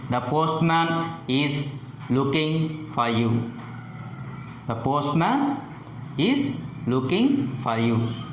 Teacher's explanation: Here the pitch falls at the end. Falling tone is used with general statements.